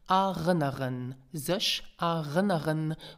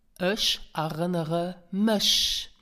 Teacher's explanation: So you hear that we drop the final N of erinnern. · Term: N rule